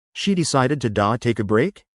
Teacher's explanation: try to soften the T in to take. Native speakers often pronounce it more like a D in that context.